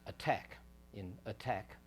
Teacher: the larynx constricts to make a glottal stop then the larynx releases and the tongue releases the L Rel is just before the tongue and that's built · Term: a clear te